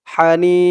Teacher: হার আওয়াজটা গলার ভেতর থেকে চিকুন করে বের করতে হবে এই হা বলার সময় আওয়াজটা হবে মোটা আর এটা চিকুন হা